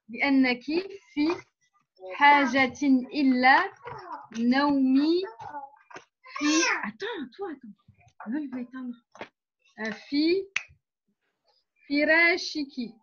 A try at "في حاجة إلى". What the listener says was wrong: C'est bien pour toute la lecture, sauf ici, tu as dit illa. Enfin, j'ai entendu illa. Donc, c'est fi hajatin ila. Fi hajatin ila naomi. Sinon, on va confondre avec le illa, comme ça, je l'avais dit plusieurs fois.